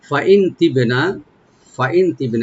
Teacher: ফা ওপেন রাখবেন, আর হামজাকে রাইট দিয়ে নুন সাকিন এখানে আমরা একটু লাইট গুণা করব